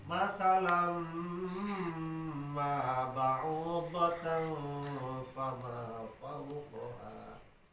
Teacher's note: Seperti masalam ma ba'udatan fama fawqaha masalam ma ayat tanwin dina lam masalan ngarepan mim hukumna idgham sora tanwin diasupkeun kana mim bari idghamna diguna lantaran make ari guna eta naon dengung masalam ma ba'udatan fama fawqaha.